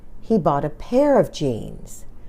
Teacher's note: some words are strong and others are weak the last word is the strongest and longest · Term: sentence dress